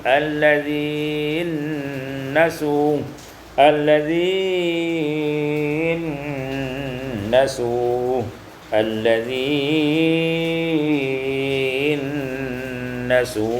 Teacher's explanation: idghamun nun fin nun, diidghamkan nun pada nun